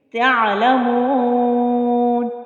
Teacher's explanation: عین کو پھر وسط حلق سے ادا کریں گے۔ ہا اور عین دونوں کا مخرج ایک ہی ہے، کون سا؟ حلق کا درمیانی حصہ، وہاں سے ہم نے عین کو ادا کرنا ہے۔